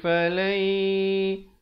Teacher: falai asalnya falan, tapi bila datang ya hukumnya idgham bi gunnah masuk beserta dengung